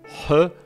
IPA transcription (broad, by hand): ħ